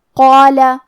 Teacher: ہم قاف کو اور مد الف کو دونوں کو بھاری آواز میں پڑھیں گے